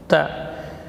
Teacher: Ta huruf syiddah dan hamas, ta. Posisi ujung lidah di usul tsanaya, pangkal gigi seri atas.